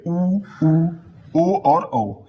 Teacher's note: हमारा मुख जो होता है जब गोल हो जाता है तो उसे कहते हैं वृत्त मुखी